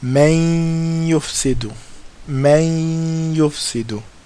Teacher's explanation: doing it with ghunna for two harakas